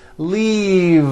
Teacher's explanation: keep the voicing going throughout the whole word and voice the V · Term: voiced V